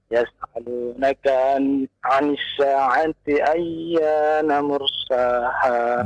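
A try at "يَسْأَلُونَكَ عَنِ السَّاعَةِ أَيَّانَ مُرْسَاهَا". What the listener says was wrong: Iya, bagus.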